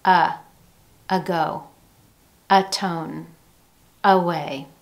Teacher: Instead of enunciating an A sound, as in the words day, may, say, we hear schwa at the beginning of these.